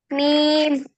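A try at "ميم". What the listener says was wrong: मीम, very good, ये।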